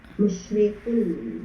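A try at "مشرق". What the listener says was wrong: Jangan itu pakai qaf, bukan pakai kaf.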